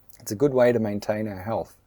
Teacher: the T in the 'to' becomes a D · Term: assimilation